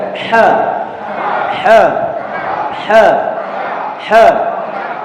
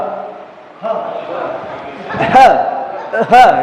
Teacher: Berarti ha masuk kumpulan rokhawah, artinya langsung ngalir.